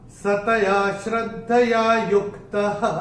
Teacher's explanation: जो स आधा जो है उसका उच्चारण होगा विसर्ग